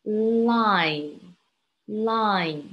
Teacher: it's a nasal sound you can keep your mouth open but the sound is actually coming from your nose